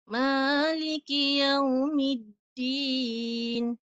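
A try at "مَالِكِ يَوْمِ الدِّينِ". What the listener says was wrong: Tak cukup 4. Panjang sikit lagi.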